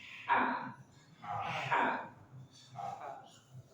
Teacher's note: Kemudian ha dari tengah tenggorokan. Pastikan bersih dari suara ngorok.